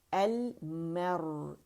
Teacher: را موٹا ہے کیونکہ را ساکن سے پہلے ہمارے پاس فتح آ رہی ہے